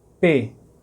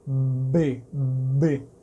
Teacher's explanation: A diferença é que o P não tem vibração das cordas vocais, você só fecha mesmo. Enquanto que o B, ele faz B, B, certo? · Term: não sonoro